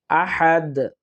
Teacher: হা এর উচ্চারণটা আমরা কণ্ঠনালীর মাঝখান থেকে নেওয়ার চেষ্টা করব